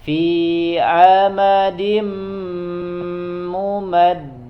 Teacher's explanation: Fi huruf ain ya di tengah tenggorokan